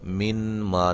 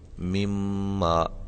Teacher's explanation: یہ دیکھیں نون ساکن ہے، نون ساکن کے بعد میم متحرک ہے۔ نون ساکن کا میم متحرک کے اندر ادغام ہو رہا ہے، یہاں دیکھیں، یعنی کہ ایک حرف کو دوسرے حرف میں داخل کیا اور پھر اس کو ہم نے مشدد کر دیا۔